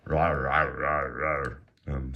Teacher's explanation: they have that retroflex R at the end of everything, heavy use of that retroflex R